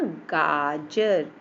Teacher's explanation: आ की मात्रा भी बोलते हैं तो पूरा मुंह खुल जाता है, थोड़ा टाइम लगता है। जैसे गाजर, है ना, टाइम लगा ना, गाजर।